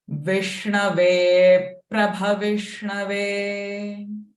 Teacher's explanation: ba is alpa prana, but bha is mahaprana. So let that force, let that air expels from your lungs.